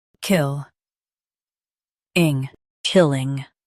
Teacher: Stress kill and keep ing soft.